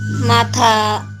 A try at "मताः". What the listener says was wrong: మతాహ ఉమ్, మతాహ మతాహ కాదు, మతాహ మతాహ మతాహ ते मे युक्ततमा मताः మతః కాదండి, తాకాకారం ఉంది, మతాహ కొంచెం తానే కొంచెం సాగదీసి, తా వేరు, తా తా తా రెండో తా పలకాలి. మతాహ